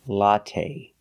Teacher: the last syllable is the long a a it's not stressed but we use the long a like say and pay latte make a long sound not the short latte but the